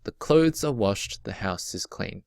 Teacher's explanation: there are four feet in each of these lines